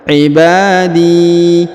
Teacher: Ya, di jadi agak panjang 2 harokat ya. Ibadi, jangan panjang 1 tapi harus 2 ya, karena terdapat ya sukun di depannya.